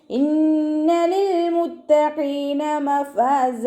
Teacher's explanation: ഇന്ന നുൻ ശദ്ദ അഖ്മൽ ഉന്ന നല്ലോണം മണിച്ചു കൊടുക്കുക. ലാമ് കൽക്കലയുടെ ലെറ്ററില്ലാത്തത് കൊണ്ട് ഹാഫ് സുക്കൂന് കൊടുക്കുക.